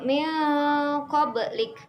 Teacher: Contoh dari ikhfa ialah yang pertama min qablik. Di situ ada nun mati bertemu dengan huruf qaf, maka dibaca samar dan berdengung.